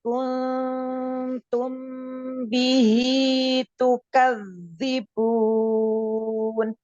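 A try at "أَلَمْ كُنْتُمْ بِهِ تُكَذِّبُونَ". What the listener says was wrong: Iya, jangan terlalu panjang. Matobi kan hanya 2 harokat atau 1 ayunan suara. Ikhfa-nya baru panjangkan ya.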